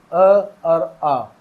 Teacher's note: जीभ कहीं नहीं हिलती यानी कि कंठ से बोले जाएंगे